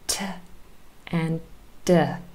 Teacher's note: The difference between T and D is T is unvoiced, D is voiced. So that is why they are still two different sounds, two different phonemes.